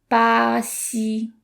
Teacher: the X sound is kind of similar to the English SH sound, except you put the tip of your tongue right against your front lower teeth